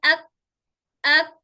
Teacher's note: और इसके बाद काफ बोल के देखिए, हमजा काफ जबर अक, अक थोड़ा से सामने होकर टच हो रही काफ की आवाज, काफ थोड़ा से सामने आ गया तो क्या हो गया, सख्त हिस्से को टच होते ही काफ हो गया।